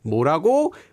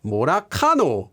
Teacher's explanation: And if you pay attention to the intonation, 뭐라고, which is smooth and gradually goes up like a normal question, versus how someone in the Gyeongsang province might say this same expression, 뭐라카노. You can hear how the intonation goes up quickly, but then back down quickly.